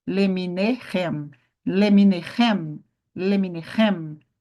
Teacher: Você só vai subir aqui no rem. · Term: sílaba tônica